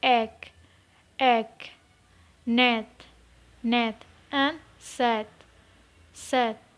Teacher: The next one is E, E. This is a short sound and its horizontal position is front and its vertical position is mid.